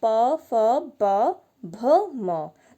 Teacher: ओष्ठ, दोनों ओंठों से हो रहा है, और वर्ण का नाम ओष्ठ्य।